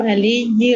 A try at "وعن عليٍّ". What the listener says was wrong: علی علی نہیں ہے، علی جن، دو زیریں، تنوین ہے، وعن علی جن،